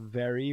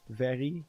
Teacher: we have a rolling R so instead of very we say very